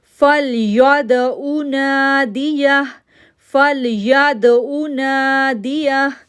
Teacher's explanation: فا کو لام کے ساتھ جوڑیں گے، یا کو دال کے ساتھ جوڑیں گے، ایکو ساؤنڈ بنے گا دال پر کیونکہ دال جو ہے وہ کلکلا لیٹر میں سے ہے، نون کو 2 سیکنڈ کے لیے کھینچیں گے اور یا کو ہا کے ساتھ ٹوگیدر کر دیں گے.